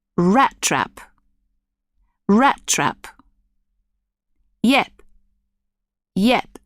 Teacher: the airstream is closed to make the sound, but not reopened, so that no air is released. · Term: unreleased final consonants